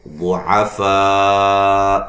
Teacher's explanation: یہ جو فا پہ مد ہے، مد واجب ہے، لمبا کریں گے. 3 سے 4 الف کے برابر اس کو لمبا کریں گے، ٹھیک ہے. صاد کو موٹا ادا کریں گے، الف مدہ ہے.